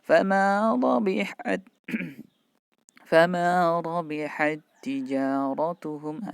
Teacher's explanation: Seakan-akan taknya ditasdid, padahal yang benar tulisannya kenyataannya seperti ini, tidak ditasdidkan tapi bacanya seakan-akan ditasdidkan. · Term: idgham mutamathilain